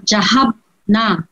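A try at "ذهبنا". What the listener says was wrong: জাহাব না, একটু শেষ নাটা লম্বা করে বল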